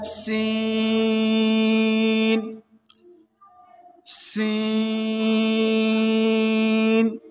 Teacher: सीन को ज़बान की नोक और दोनों दांतों के अंदरूनी किनारे से अदा करेंगे।